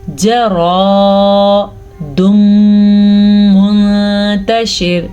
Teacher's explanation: جیم زبر جا، لیکن آگے بن رہا ہے الف مدہ تو اسے ہم کھینچ کے پڑھیں گے